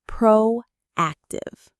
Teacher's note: The stress is on AC, proactive.